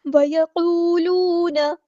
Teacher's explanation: قاف ہمارا heavy letter ہے، پورا ادا کریں گے، واؤ مد آ گیا تو مد اصلی کریں گے.